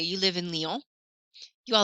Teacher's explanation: you raise your voice at the end to make it into a question instead of a statement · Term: intonation